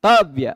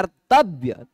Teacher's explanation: पहला स्वर वर्ण उदात हो जाएगा। तो अब तव्य का पहला स्वर वर्ण त का अ है वह उदात हो गया ऊंचे से उच्चारण होगा